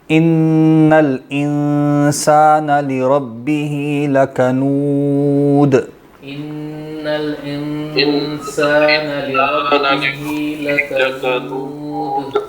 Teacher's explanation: لکنود میں دال آخر میں کلکلے کے ساتھ ہوگا. انا میں غنہ کرنا ہے اور انسان میں جو نون ہے اس پہ اخفا کرنا ہے.